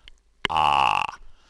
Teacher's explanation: When you say ah, your tongue is down as far as it can go, and the dentist and the doctor can then see right down the back of your throat to see if you've got any redness if you're a doctor, or how your back teeth are doing if you're a dentist.